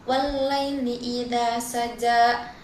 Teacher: Pada kata allaili itu terdapat hukum alif lam syamsiyah karena alif lam bertemu huruf lam. Cara bacanya huruf lam pertama itu tidak terdengar dan langsung masuk ke huruf lam yang bertasydid. Kemudian pada kata saja itu terdapat hukum mad thai.